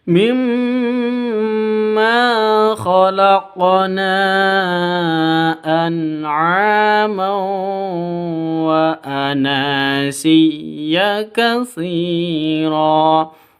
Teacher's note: mad bertemu dengan hamzah di dua kata. Mad jaiz munfasil, panjangnya boleh 2, boleh 4, boleh 6, boleh 5 ketuk.